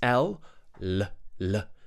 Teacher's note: the light l l l where we would press the tip of the tongue against the top of the mouth and flick it down